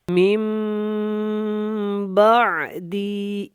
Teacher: وقف مطلق ہے، ہم نے سٹاپ کرنا ہے، یہاں پہ سانس کو نکالنا ہے، اور دی کو تھوڑا سا لمبا کر کے ادا کریں گے